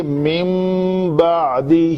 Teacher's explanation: یہاں پہ اقلاب کا قاعدہ ہے, اگر نون ساکن کے بعد حرف میم آ جائے, با آ جائے, تو کیا کرتے ہیں, اس من کے نون کو مم بعدی ایسے پڑھیں گے. نون اقلاب کا مطلب ہے نون کو میم سے بدل کر پڑھنا, اسی لیے اس نون کے اوپر چھوٹی سی میم لکھی ہوتی ہے, اور یہ صرف اس جگہ پہ ہوتی ہے جہاں نون ساکن کے بعد با آ رہا ہو.